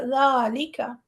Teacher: ہم اسے کاف کو بھی لمبا نہیں کریں گے نہ لام کو کریں گے، صرف ذال لمبا ہوگا